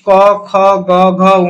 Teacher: এটা আমার কন্ঠর উচ্চারণ হই বলে আমি কই কন্ঠ বর্ণ